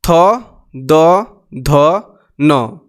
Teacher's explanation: इन शब्दों का उच्चारण स्थान क्या है दांत